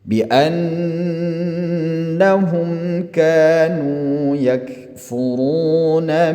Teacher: Mim mati bertemu dengan kaf di sini ialah izhar, diizharkan ya, dijelaskan. Namanya izhar syafawi.